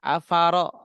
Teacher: karena ro berharokat fathah baru dibaca tebal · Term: Tafkhim